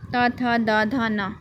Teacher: तो त वर्ग हो जाएगा दंत